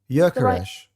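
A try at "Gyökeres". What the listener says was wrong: But it sounds like you're saying a U in the middle. Jökeres.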